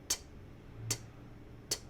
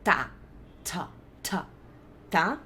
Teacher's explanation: T, t, t, Deve estar dando super pra ouvir as porradas de ar que eu tô soltando, porque o som do T em inglês é um som com muito ar na boca, passa muito ar dentro da boca pra fazer o som do T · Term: true T